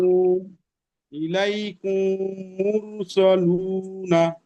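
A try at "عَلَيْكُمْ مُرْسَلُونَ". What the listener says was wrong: জি, কু টান দেবেন না, মিমটাকে গুণনা করতে হবে। ইলাইকুম, কুম, কুম মুরসালুন। এই কাফটা টান হবে না, এই মিমটা গুণনা হবে, মিমটা গুণনা।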